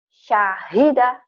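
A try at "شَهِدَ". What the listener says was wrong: Pendek. Syahida.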